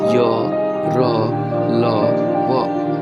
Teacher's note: जिन व्यंजन का उच्चारण करते समय जीवा मुंह के किसी भी भाग को पूरी तरह स्पर्श नहीं करती है उसे अंतःस्थ व्यंजन कहते हैं।